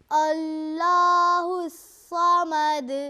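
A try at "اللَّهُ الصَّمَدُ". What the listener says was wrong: अल्लाह का लाम मोटा कीजिए और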